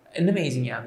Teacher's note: consonant connects to the vowel at the beginning of the next word with no break as you see they uh get pronounced as one word so